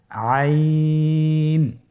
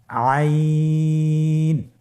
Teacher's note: আইন হরফটি কন্ঠনালীর মধ্যখান থেকে উচ্চারিত হয়।